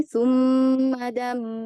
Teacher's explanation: Ada mim yang bertasydid, maka gunahnya dialirkan dulu.